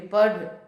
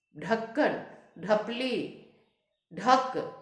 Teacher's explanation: पढ़ में जो ढ आता है उसका उच्चारण पूर्ण रूप से नहीं होता है हल्का सा अंत में पढ़ और ढक्कन ढपली ढक इसमें पूरा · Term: उत्क्षिप्त व्यंजन